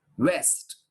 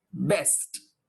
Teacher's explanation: When you pronounce this W, you start as if you have completed saying O.